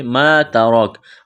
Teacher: ہے، ما ترک، الف مدہ ہے، الف کے برابر کھینچنا ہے، تا کو باریک کرنا ہے، را کو موٹا کرنا ہے